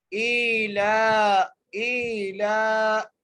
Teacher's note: لیے حمزہ کو ایک الف کی مقدار کھینچ کے پڑھیں گے، لام کے اوپر کھڑی زبر ہے، لام کو بھی ایک الف کی مقدار کھینچ کے پڑھیں گے · کے اندر ایلافہم، حمزہ کے نیچے کھڑی زبر ہے، اس لیے حمزہ کو ایک الف کی مقدار کھینچ کے پڑھیں گے